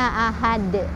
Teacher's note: Jadi kalau dia berhenti juga harus tetap ada pantulannya Ahad itu yang kedua apabila kita menemukan kalimat yang huruf terakhirnya